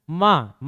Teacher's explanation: बिना नाक से आप बोल ही नहीं सकते गुनगुनाने बिना नाक से गुंजन के बिना बोल ही नहीं सकोगे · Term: पंचम वर्ण